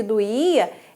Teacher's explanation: doía é uma paroxítona porque tem a penúltima sílaba mais forte